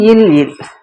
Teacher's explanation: நாவினது ஓரம் தடித்து மேற்பல்லின் அடியை தொட லகாரம், வருட லகாரம் பிறக்கும்.